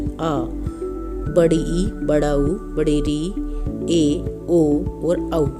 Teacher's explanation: दीर्घ स्वर इनमें 2 मात्रा का समय लगता है, मतलब ह्रस्वर से दुगना समय।